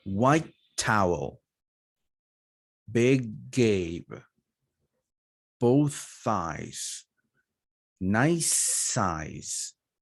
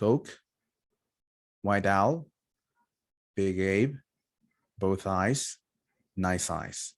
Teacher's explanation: consonant sound white towel big gabe both thighs nice size okay you elongate you make the consonant sound longer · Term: one long consonant